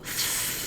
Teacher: So it's called a labiodental, which basically means it's the lip and teeth. Labiodental fricative, voiceless. So there's no vibration here.